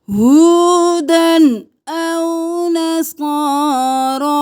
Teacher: کونو ہودن نہیں کرنا، ہودن او نصارا، تنوین پہ گنہ نہیں کریں گے کیونکہ آگے حمزہ آ گیا۔ ہودن او نصارا، صاد بھی موٹا، را بھی موٹا، دونوں پہ کھڑی زبر ہے، ایک الف کے برابر کھینچیں گے۔